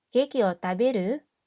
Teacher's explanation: we say it with the rising intonation to make it into a question